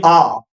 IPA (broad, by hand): a: